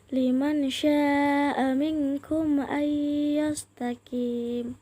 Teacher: nun sukun bertemu dengan shin yang disebut juga hukum ikhfa dan dibaca secara samar-samar.